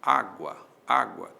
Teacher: Há uma subidinha do U para o A. Esse U é semivogal, o A é vogal. Aí nós temos um ditongo.